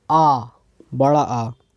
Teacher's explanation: विव्रत स्वर के उच्चारण में मुख द्वार पूरा खुला होता है। विव्रत मतलब पूरा खुला होता है।